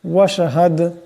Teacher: বানিসে জের আসছে আল্লাহ নামকে পাতলা আওয়াজে পড়তে হবে ওয়াশহাদ এখানে দাল সাকিন দাল কলকলা হরফ আওয়াজের টক্কর খাবে